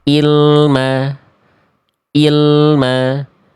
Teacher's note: Ya, harusnya kita baca ain. Tapi banyak di antara kita melafalkan huruf ain berubah menjadi hamzah.